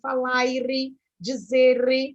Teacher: Por exemplo, o português, né, a língua portuguesa falada pelo indivíduo português, europeu, esse R final ele é muito mais intensificado na pronúncia. Muitas vezes, o indivíduo português, inclusive, acrescenta até alguma outra letrinha nesse final.